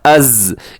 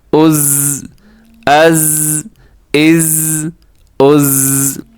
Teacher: آگے ہے جی زا, حمزہ زبر زا از, اس میں سیٹی ہے, اس میں اور ذال میں یہی مین جو ڈفرنس ہے وہ یہی ہے کہ اس میں سیٹی ہے اور اس میں سیٹی نہیں ہے. از جیسے شہد کی مکھی والی آواز ہوتی ہے